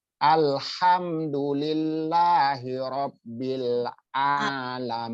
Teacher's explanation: Alamin itu ain tempatnya di tengah-tengah tenggorokan ya. Itu tempat keluar hurufnya atau makhrajnya ya.